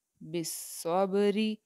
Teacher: اس را کے نیچے جو ہے وہ زیر ہے، تو یہ را جو ہے وہ باریک ادا کی جائے گی